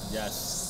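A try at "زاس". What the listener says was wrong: Yang sedang dipraktekan barusan adalah tengah lidahnya tersentuhkan ke langit-langit. Jadinya huruf jim harusnya ujung lidah ke ujung gigi.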